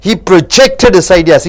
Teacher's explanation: இங்கே ஜெக்டுக்கு அழுத்தம் கொடுக்கிறீர்கள். ஏனென்றால் இது வினைச்சொல்